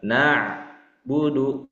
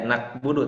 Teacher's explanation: huruf ain yang sudah sama-sama dibahas di tikror 1 ya. Berasal dari tengah tenggorokan. Na'budu. Nah, jangan sampai ada pantulan.